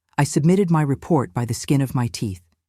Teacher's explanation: For example, I submitted my report by the skin of my teeth. Notice how native speakers emphasize skin slightly, giving the phrase a natural rhythm and punch